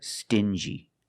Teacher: These two words have the regular n sound plus the j like juice together.